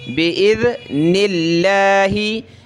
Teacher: لفظ اللہ سے پہلے زیر آ جائے جیسے کہ یہاں نون پر زیر ہے تو یہاں لفظ اللہ کو ہم نے پتلا کرنا ہے